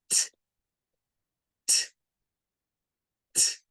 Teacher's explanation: es un sonido en donde solo respiramos y sacamos el aire lo expulsamos es un sonido sin vibración